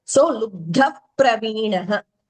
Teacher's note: Nacha Vana Mrigayayam Naiva Lubdha Praveenaha. Here Visarga followed by Pa. It is Upadmaniya.